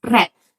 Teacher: R is a rhotic approximant, as in the word red, where the tongue touch the alveolar or the post-alveolar area without curling back.